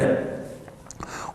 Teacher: वे वर्ण जिनके उच्चारण में जीवा को 2-3 बार कंपन करना पड़ता है। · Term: प्रकंपित